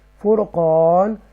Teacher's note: یہ جو را ہے وہ تفخیم کے ساتھ پڑھیں گے، پور پڑھیں گے، بولڈ پڑھیں گے، اسٹرونگ پڑھیں گے